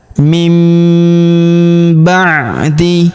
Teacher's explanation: Jadi bukan dibaca min ba'di, tapi nun sukun berubah menjadi mim.